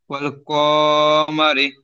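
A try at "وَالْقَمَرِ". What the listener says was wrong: ক টান হয়ে যাচ্ছে, হারাকাত আছে। ওয়াল কমারি।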